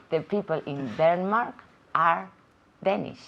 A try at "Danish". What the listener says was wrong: Muy bien. Danish, es más largo. Danish. Eso es.